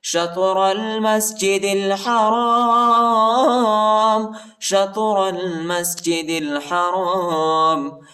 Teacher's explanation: شین کو طا کے ساتھ ملائیں گے، را کو لام کے ساتھ ملائیں گے، الف نہیں پڑھا جاتا، الف پر حرکت نہیں ہے، اور دال کو لام کے ساتھ ملائیں گے، الف نہیں پڑھا جاتا، الف پر حرکت نہیں ہے۔